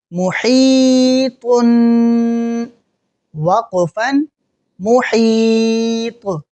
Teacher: آخری حرف حروف قلقلہ میں سے ہے تو وقف کرنے کے بعد ہم یہاں قلقلہ کریں گے